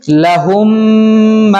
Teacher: یعنی غنہ کرنے کا مطلب ہے کہ اس کی آواز کو، میم کی آواز کو ناک میں لے جا کر تھوڑا سا ٹھہر کر ایک الف کے برابر کھینچ کر پڑھیں گے